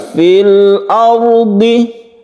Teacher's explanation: Al-ardi, ini kita baca sebagai izhar qamariyah. Kemudian ada ra sukun yang sebelumnya ada fathah, kita sebut dengan ra yang tafkhim atau tebal. Fil ardi, kita tebalkan.